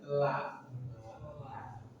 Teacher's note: Dari dua ujung sisi lidah, hingga ke akhir dari hingga ujungnya bertemu dengan gusi atas di hadapannya, la. Dan ingat betul bahwa la atau lam dia adalah huruf yang sifat tartik tipis.